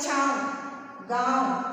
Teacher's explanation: और चंद्र बिंदु जब हम इसमें लगाते हैं तो मुख और नासिका, क्योंकि छाव बोलने के लिए तो मुख का प्रयोग तो किया था हमने, लेकिन जब चंद्र बिंदु को हम उच्चारण करते हैं तो हमें नासिका का भी प्रयोग करना पड़ेगा। नाक से भी स्वर मतलब वायु निकलती है। · तो शुद्ध उच्चारण करने के लिए हमें नाक से भी थोड़ी सी श्वास बाहर निकालनी पड़ती है। उच्चारण करते समय नासिका का प्रयोग भी करना पड़ता है। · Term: अनुनासिक